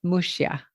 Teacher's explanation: in the Galician language, the X is a sh sound. So it's Muxia or Muxia.